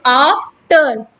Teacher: अगर हम दूसरा वर्ड लेते हैं आफ्टर, तो हम आफ्टर बोल रहे हैं, तो आफ्टर, आफ बोलने में हमें स्ट्रेस, हमें बल लगाना पड़ रहा है, लेकिन टर बोलने में हमें बल लगाना नहीं पड़ रहा है, तो आफ हो जाएगा स्ट्रेस, टर हो जाएगा अनस्ट्रेस। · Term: ट्रॉकी फूड